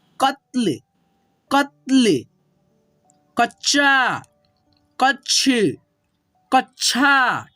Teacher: कच्छा, इसमें अ का साउंड नहीं होता है, ठीक है। जो आधा होता है ना इसमें अ का साउंड नहीं होता, इसीलिए आधा होता है। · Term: आधा अक्षर